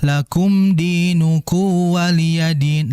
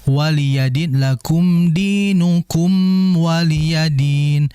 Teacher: Hati-hatinya biasanya mimnya enggak dibaca jelas langsung masuk ke wau.